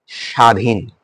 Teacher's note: দন্তেশ্বরের সাথে ব ফলা রয়েছে সেই কারণে এটা উচ্চারিত হয়নি